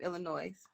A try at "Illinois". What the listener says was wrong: You said Illinois with an S. I thought Illinois was Illinois.